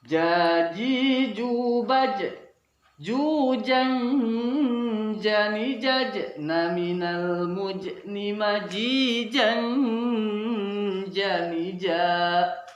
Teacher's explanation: Kita akan lanjutkan kajian tentang makharijul huruf hijaiyah yang kelima, yaitu huruf jim, yang salah satu di antara dari 3 huruf yang keluar dari tengah lidah kita. Huruf jim, ya, dan sya merupakan huruf yang keluar dari tengah lidah kita. Oleh sebab itu kita harus membunyikannya seperti huruf J dalam bahasa Indonesianya, namun tidak boleh disertai keluarnya nafas.